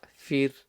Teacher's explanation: the ra is going to be empty mouth because the ra is sakin, but you look at the letter before.